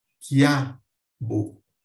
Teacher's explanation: O I é o mais fraco, é uma semivogal, e eu passo para mais forte, que é o A · O ditongo crescente, quando eu tenho uma semivogal seguida de vogal, e aí há uma subida de pronúncia, há uma força menor na semivogal e uma força maior na vogal, portanto, há uma ascensão aqui na pronúncia, como em quiabo.